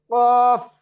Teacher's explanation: zipper গোড়া তারপর তালু, দুই নুক্তাওয়ালা কফ